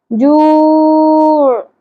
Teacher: آخر میں عین کی ساکن ہونے کی بالکل کلیئر آواز ہونی چاہیے